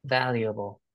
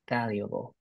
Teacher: the syllable that is stressed is the first one